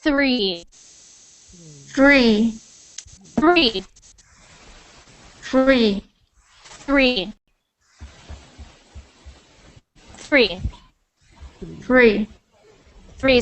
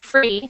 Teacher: I want you to actually stick your tongue out of your mouth when you make that th sound